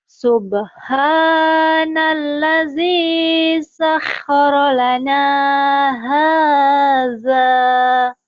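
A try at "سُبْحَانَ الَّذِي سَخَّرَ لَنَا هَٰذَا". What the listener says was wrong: udah bagus di ujungnya turun lagi.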